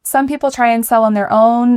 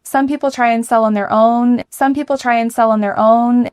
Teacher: our emphasized words, try, sell, own